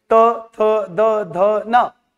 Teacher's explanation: आप देखेंगे बिना दांत को स्पर्श किए जीभ यह वर्ण उच्चारित नहीं हो सकते हैं, तो इन्हें हम क्या कहते हैं, दंत वर्ण।